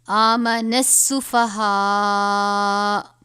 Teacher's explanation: یہ طوا آپ دیکھ رہے ہیں وقف مطلق ہے، وقف مطلق ہو تو یہ حمزہ ساکن ہو جائے گا، اس حمزہ کو ہم نہیں پڑھیں گے